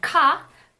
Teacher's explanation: it's a strong aspirated velar stop